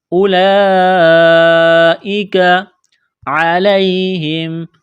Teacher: کو پڑھیں گے اولئک، اس واو کو نہیں پڑھیں گے۔ یہ لمبی مد ہے، 4 الف کے برابر کھینچنا ہے، کاف کو باریک کرنا ہے۔